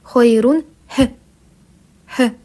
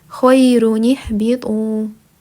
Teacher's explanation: при слитном чтении двух слов, если у нас первое слово заканчивается на танвин, неважно на какой танвин, ан, ин, ун, а второе слово начинается с сукуна, то в этом случае нам нужно к танвину добавить кесру.